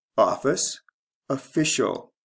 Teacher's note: The stress changes from first to second syllable.